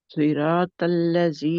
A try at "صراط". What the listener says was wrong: را کو اور موٹا کریں